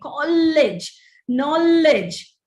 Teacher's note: we have to wean ourselves off this gemination or the double pronunciation of consonant sounds